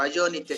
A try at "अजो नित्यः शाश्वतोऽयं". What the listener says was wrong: అరే తప్పు. అలా కాదు. ఒక్క నిమిషం. ఆ విసర్గ చెప్పు, వినపడకూడదు.